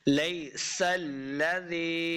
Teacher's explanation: سین کے اوپر سیٹی کی آواز آئے گی